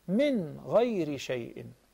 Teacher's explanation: There is no Ghunna, rather there is complete Adhar.